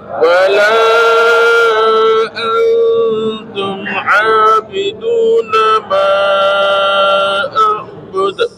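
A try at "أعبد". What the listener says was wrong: Bukan a'bud. Nah ini lagi bukan a'bud, jangan a'bud itu jadi hamzah. A'bud. Dulu baru ain bukan latihannya gini Pak, latihannya gini. Jadi pertama hamzah dulu. Pertama hamzah, akhirnya baru ain.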